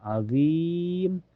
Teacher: Cara bacanya panjang bisa 2 4 sampai 6 harakat. Tetapi harus konsistenya pilih salah satunya mau 2 4 atau en harakat. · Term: mad arid di sukun